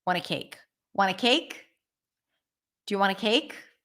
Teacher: So want a cake, I would just reduce to wanna.